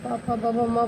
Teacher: प फ ब भ म बोलेंगे तो आपका होठ जो है टच करता है